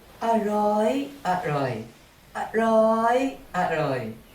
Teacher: To apply the second tone rule, change the tone of the second syllable in the first word from low tone ร่อย to high tone ร้อย